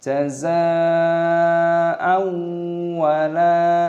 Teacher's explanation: Bunyi tersebut ditetapkan sebagai idgham bighunah, artinya bunyi tersebut menyatu dan disertai dengan bunyi sengau.